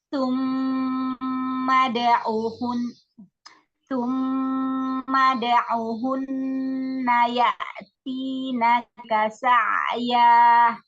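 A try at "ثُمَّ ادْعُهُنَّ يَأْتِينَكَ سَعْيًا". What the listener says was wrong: Ini yang ya'tinaka itu hamzah, bukan ain. Ya'tinaka. Atau bilang yuk. Jadi ngomongnya kayak huruf K Indonesia tapi yang lunak.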